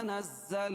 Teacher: نزل اللہ نز زا پر تشدید ہے، نون کو زا میں سختی کے ساتھ ملائیں گے اور زا کو پھر پڑھیں گے. تشدید والا حرف دو مرتبہ پڑھا جاتا ہے.